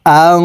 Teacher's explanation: ইকফা গুন্না নুন সাকিনের পরে ইকফার হরফ দাল আসছে এই কারণে এই নুন সাকিনকে নাকের ভিতরে লুকাইয়া গুন্নার সহিত পড়বো